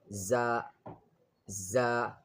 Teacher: The pronunciation of za with the tip of the tongue near the lower teeth. Za, za, without touching.